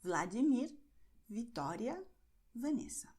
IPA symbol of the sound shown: v